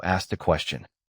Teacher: The T sound at the end of asked meets the vowel at the beginning of A, so the phrase flows forward. Keep the ending light, then move directly into the next word.